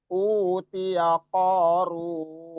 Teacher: U-nya 2 harokat, O-nya 2 harokat, matobi'i run-nya juga 2 harokat kalau kita lanjut atau kita wasol.